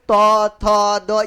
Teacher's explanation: त थ द ये तो भाई दांत में टच होगा